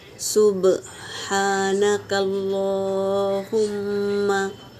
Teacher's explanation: सुब्हाना बा सुकून है तो खलखला होगा, हा हवा के साथ निकलेगा और खड़ा ज़बर है तो एक अलिफ के मिकदार खींच के पढ़ेंगे।